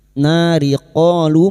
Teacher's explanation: Nah fathah diikuti alif, 2 harokat kita panjangkan mad tabi'i. Nari qalu, masing-masing 2 harokat kita panjangkan, fathah diikuti alif, dhamma diikuti wawu sukun, 2 harokat kita panjangkan.